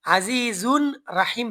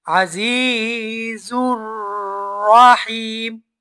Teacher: নুন সাকিন এবং তানবিনের পরে যদি রা আর লাম আসে তাইলে গুন্না ছাড়া মিলাইয়া পড়তে হয় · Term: ইদগামে বেগুন্না